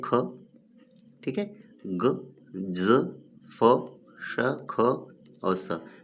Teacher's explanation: जिनके उच्चारण में मुख के 2 अवयव एक दूसरे के निकट आ जाते हैं और वायु निकलने का मार्ग संकरा हो जाता है, तो वायु घर्षण करके निकलती है, उन्हें संघर्षी व्यंजन कहते हैं।